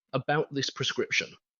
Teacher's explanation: Listen to my pitch on that final phrase, "about this prescription." It isn't a rising, hopeful, or pleading inflection. It is a firm, controlled, downward pitch drop. Downward intonation projects calm, uncompromising authority.